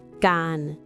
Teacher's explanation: It ends with n, which is a sonorant final, so the tone follows the open syllable rule, mid.